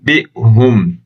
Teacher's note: İzafi mənası isə bir hərfi başqa bir hərfin yerinə qoymaqdır. Yəni, B hərfindən əvvəl sükunlu nun və ya tənvini mim hərfinə çevirməkdir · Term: iqlab